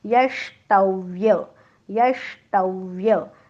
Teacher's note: ट म्हणताना जीभ टाळ्याला चिकटते, आणि व हा दंतौष्ठ वर्ण आहे. व चा उच्चार करताना दात आणि ओठ यांचा एकमेकांना स्पर्श होतो